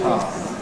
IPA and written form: ˈpaə (power)